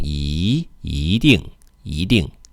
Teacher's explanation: In the case of 一 定, because 定 is a fourth tone, then E becomes a second tone